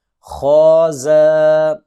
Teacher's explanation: خا کو موٹا کریں گے اور زا کو سیٹی کے ساتھ تیز آواز سے پڑھیں گے